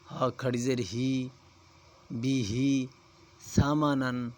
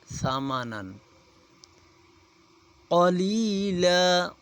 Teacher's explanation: یہ خیال کریں گے کہ سا کی آواز نکالیں گے، سیٹی کی آواز نہ نکلے، سیٹی کی آواز نکلے گی تو سین کی آواز بن جائے گی، اس لیے ثمنا قلیلا، قوف موٹا ہے اسے موٹا پڑھا جائے گا۔